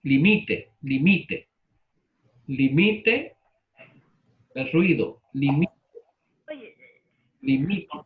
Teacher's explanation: Palabra llana con pronunciación en la penúltima sílaba